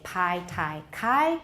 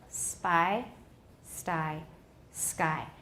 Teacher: if we put an s in front of ptk ptk are no longer aspirated but they are not voiced · the aspiration is gone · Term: unaspirated